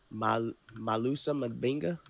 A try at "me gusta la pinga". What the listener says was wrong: No, me gusta. La pinga. La pinga with P. Pinga. P, P, P, P, P. Pinga, pinga. Me gusta.